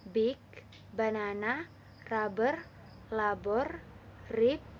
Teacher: When we pronounce B, we do it like when we pronounce P, except that in B there is a vibration in the vocal cords